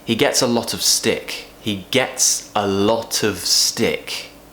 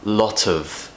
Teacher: We're connecting lot and of. Lot of. Of is not being pronounced as its true form. It's being relaxed. It's what we call a weak form, because the word of is not very important in this sentence.